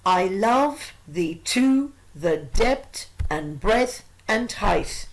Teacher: exactly 10 beats per line with 5 stressed and 5 unstressed syllables · This sonnet is written in iambic pentameter. There are 10 syllables per line, with 5 pairs of unstressed and stressed syllables.